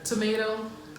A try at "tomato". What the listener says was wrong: And then the last two, you say tomato. Why do you pronounce it as D-O? It's T-O. Then you should start with, you should start the first T as D. So tomato. Why do you say tomato? Like, it's tomato. That's how we pronounce it.